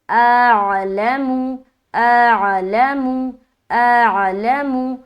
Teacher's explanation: بالکل الف حمزہ کو نکالتے ہوئے عین کی مخرج میں لے کر جانا ہے